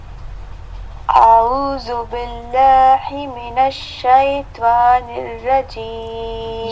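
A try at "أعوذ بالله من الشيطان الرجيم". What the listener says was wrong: یہ والا ہا جو ہے نا آپ غلط پڑھ لی ہیں. ہی نہیں، باللہ. ٹھیک، اب مکمل آیت کی صورت میں پڑھیں گے. اعوذ باللہ من الشیطان الرجیم.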